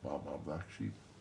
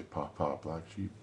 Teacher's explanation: Feel the puffs of air. Well, the puffs of air in linguistics is called aspiration. That means, again, using your breath.